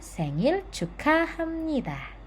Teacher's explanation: 'bieup' bertemu dengan 'nieun', jadi ' bieup' menjadi 'mieum'